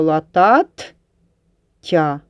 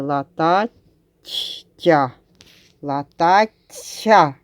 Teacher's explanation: Ми чуємо подовжений приголосний